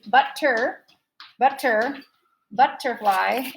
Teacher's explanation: now if i was to emphasize one of these butter butter butterfly it's actually the first one